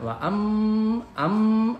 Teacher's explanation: Lanjut ayat ke-8, wa am ada mim di atasnya tasdid berarti gunnah dibaca dengung.